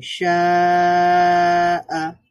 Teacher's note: আলিফ মাদ ছিল, মানে এটা মাদের হরফ, একটা আলিফ ছিল, এরপরে একটা হামজা আছে, এই কারণে এটাকে 4 আলিফ বা 3 আলিফ টেনে পড়তে হবে। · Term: হরফুল মদ